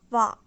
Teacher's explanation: this is the combination of ㅗ and ㅏ. And if we say it really fast, we get wa